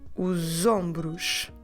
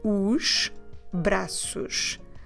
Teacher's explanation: we can't run together the os plus the braços because braços starts with the consonants, so there's no way to have that Z sound in between the os and the braços · So that S at the end of the article os becomes like a Z